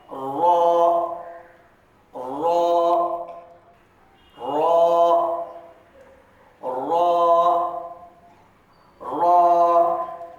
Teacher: زبان کی نوک کو اوپر کے دانتوں کے جو مسوڑے ہیں وہاں پر آپ لگیں